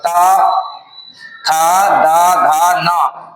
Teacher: त वर्ग दंत से बोले जाते हैं